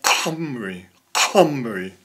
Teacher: a hard guttural sound, similar to KH. So it would be something like Humri, Humri, in the back of the throat